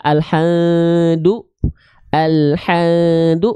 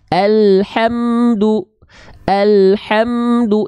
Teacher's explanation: Karena mim keluar makhrajnya dari syafatain syafatain itu dua bibir · cara melafalkan Izhar Syafawi adalah menjelaskan ya Bunyi mim sukun yang keluar dari bibir